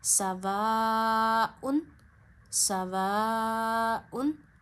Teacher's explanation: यहां पता चला कि अलिफ मदद पे मदद है तो अलिफ मद्दा को आपने टू फिंगर्स जितना खींचना है क्योंकि आगे हमजा है। मद के बाद हमजा हो तो मद को टू फिंगर्स जितना दो उंगलियों जितना खींचते हैं।